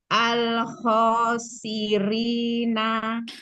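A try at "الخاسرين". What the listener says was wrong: Siri-rinya tipiskan. Al-khosirina.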